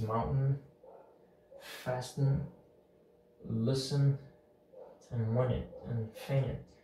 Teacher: The T is really muted, you cannot really hear it. And this happens usually when there's a N right before the T. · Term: drop T